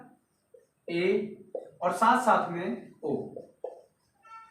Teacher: अर्ध संवृत्त मीन्स आधा बंद हुआ जब मुख रहता है तो आप ए बोल सकते हैं और ओ बोल सकते हैं